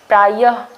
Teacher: ह जो है वो बहुत बड़ा, उसको हम पॉज देके या फिर मतलब बहुत ज़्यादा ट्रेस देके नहीं बोलते हैं, बट प्रायः जब बोलते हैं तो पीछे य के बाद ही आपका ह का साउंड जो है वो आ जाता है। तो यहाँ पे जो है वो प्रायः के बाद जो है वो आपका विसर्ग आ जाएगा।